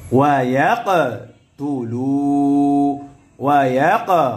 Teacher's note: কফ কলকলা হরফ প্রতিধ্বনি আওয়াজ হবে অর্থাৎ ধাক্কা দিয়ে পড়তে হবে